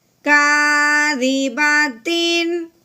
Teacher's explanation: تنوین پہ غنہ بالکل نہیں کرنا، بلکہ اس کو بغیر غننے کے اظہار کے ساتھ پڑھیں گے